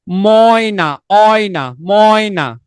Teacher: অ এবং এ, এই দুইটা মিলে উচ্চারিত হয় অয়। এই দুটার সম্মিলিত উচ্চারণ হচ্ছে অয়। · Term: যৌগিক স্বরধ্বনি